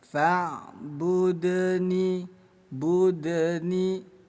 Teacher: Bunyi dal kita pancul pantulkan kecil ya. Fa bud ditambahkan bunyi e di setelah huruf dal. Faudni budni hukumnya qol qola. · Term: qalqalah sugro